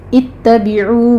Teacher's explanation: تا باریک رکھنا ہے لیکن تشدید ادا کرنی ہے، آپ نے سختی سے تھوڑا رک کر چلنا ہے۔